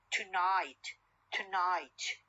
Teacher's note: O sound or schwa sound is deleted and the N becomes syllabic N